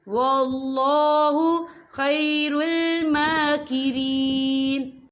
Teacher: میم کے اوپر کھڑی حرکات ہے، تو ہم اسے 2 یا 3 حرکت کے برابر کھینچ کے پڑھیں گے